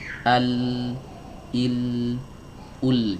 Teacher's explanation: huruf lam itu keluar dari pinggir atau sisi lidah bagian depan